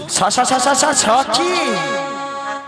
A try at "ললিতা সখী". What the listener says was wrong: এ বুড়িকে বলে ললিতা সখী, বলে স স স স সখী। বলো ললিতা সখী।